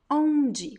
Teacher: you see that i don't pronounce m or n it's just an o sound that comes through your nose next word same same thing here there's no m sound it